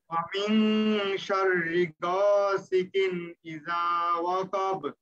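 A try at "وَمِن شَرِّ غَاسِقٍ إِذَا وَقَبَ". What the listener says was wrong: গইনটা আরো মোটা করতে হবে, ওয়াসিকিন।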